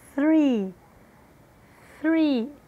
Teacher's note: som de S com a ponta da língua entre os dentes